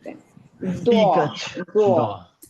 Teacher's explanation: মানে দুই মাড়ি সাথে জিহ্বাটা থাকবে, কিন্তু জিহ্বাটা সামনের দাঁতে লাগবে না। সামনে দাঁতে লাগবে না, এটাই ডিফারেন্স, আর কিছু না।